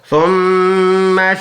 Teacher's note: ناک میں آواز لے کے جائیں گے، اس کی مقدار ہوگی 1 سیکنڈ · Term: غنہ